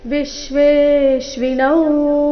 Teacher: ವಿಶ್ವೇಶ್ವಿನೌ ಮೊದಲ ಎರಡು ಅಕ್ಷರಗಳ ಮೇಲೆ ಆಘಾತ